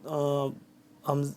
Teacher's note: یہ جو مد ہے یہ 4 سے 5 الف کے برابر، یہ مد لمبا ہوتا ہے